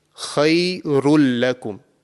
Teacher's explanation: So, it's completely assimilated. It's completely joined into the lam mushaddad, and no nasal sound has been produced.